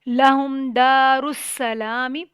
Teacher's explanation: سین پہ سٹی کی آواز آئے گی. لام پہ کھڑی زبر ہے، ایک الف تک لمبا ہو جائے گا.